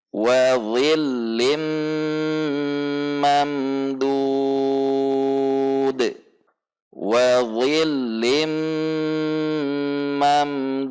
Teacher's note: karena di akhir ayat maka kita akan waqaf di sini, sehingga dal disukunkan, dudin mad tabi'i menjadi mad arid lis sukun.